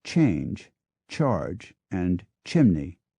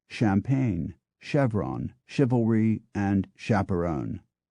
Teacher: older CH words have developed a distinct TCH sound as in change charge and chimney while the newer words retain the softer sh sound of champagne